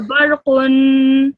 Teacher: that noon sound at the end, the nasal sound at the end, you should prolong that for 2 seconds